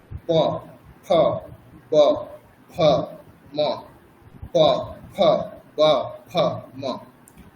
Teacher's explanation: প বর্গের উচ্চারণ করা হচ্ছে দুটি ঠোঁট মিলে, মানে দুটি ঠোঁট পরস্পরকে স্পর্শ করবে,